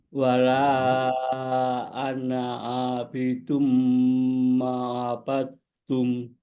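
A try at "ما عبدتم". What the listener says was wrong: Ma'abadtum. Antara ma dengan a harus jelas pemisahnya dan harus clear bacaan hurufnya. Ma'a, ma'a, ma, bukan ma'a, ma'a, ma'a, enggak ma'abattum.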